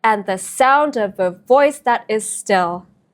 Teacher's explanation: two unstressed syllables followed by one stress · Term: anapaests